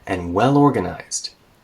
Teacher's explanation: by rising my voice there, I'm letting you know I'm going to say another adjective